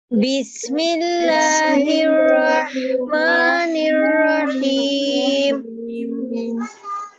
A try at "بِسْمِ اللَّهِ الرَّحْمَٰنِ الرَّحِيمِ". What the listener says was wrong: را کی آواز آپ کی بالکل واضح ہونی چاہیے. بسم اللہ الرحمن الرحیم. ایک ایک حرف واضح پڑھیے.